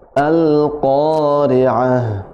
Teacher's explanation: Q-nya tebal, ya, hurufnya berada di pangkal lidah. Di pangkal lidah atau di pangkal lisan huruf qaf, ya.